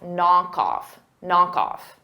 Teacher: And off, because they go together, knock off, it's one word, I'm going to use that knock off, cough. So I'm going to pronounce the final K on knock, and I'm going to pronounce it on off, knock off, knock off.